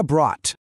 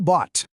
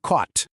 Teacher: As letras g h são completamente mudas, não tem som. A gente pronuncia apenas a vogal que vem antes, conectada diretamente ao som seco do t. O segundo padrão é ainda mais direto, uma terminação em t.